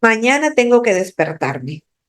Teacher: esa M la estoy prolongando demasiado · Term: prolongación